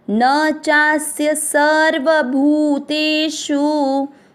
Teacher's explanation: भू पर बड़े ऊ की मात्रा लंबा खींचेंगे, भूतेषु। शु में षटकोण पे जोर देना है लेकिन ऊ की मात्रा को खींचना नहीं है